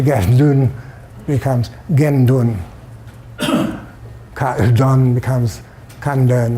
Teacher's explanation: in compounds with a second element begins with A-chung, the latter is sometimes pronounced with a nasal onset.